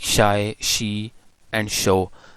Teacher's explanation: in post alveolar we use tongue blade and back of the alveolar ridge. So what we will use, tongue blade and back of the alveolar ridge just here.